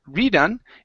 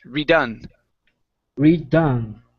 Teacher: the stress is on the end of the word